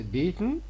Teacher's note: there is a nasal release we can call it nasal plosion